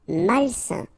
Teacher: A-I-N together, it's a nasal and it's un.